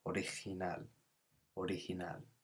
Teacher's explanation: the G is a sort of H sound or a bit more phlegmy in Spain.